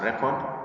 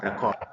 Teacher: the emphasis that falls on the first syllable to give a noun has to come out very clearly